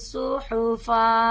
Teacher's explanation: جب ہم اس پر وقف کریں گے تو ایک زبر کو ادا کریں گے. 1 الف کے برابر یہ لمبا ہوگا.